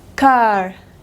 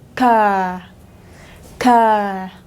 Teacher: Car, inglés americano, inglés británico, car, car. Se queda en la A larga, pero no pronuncia la R.